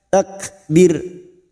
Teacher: Ra sukun yang dibaca waqaf sebelumnya ada harokat kasroh, kita baca tarkik atau tipis, takbir dengan posisi bibir yang tersenyum.